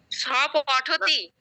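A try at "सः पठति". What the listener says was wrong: আপনি স বলবেন না, আমরা কিন্তু উচ্চারণটা শিখিয়ে দিয়েছি সাহা। আপনি স বলছেন কেন? আজকে সংস্কৃত শিখতে এসেছেন, বাংলা ভুলে যান। সাহা পঠতি।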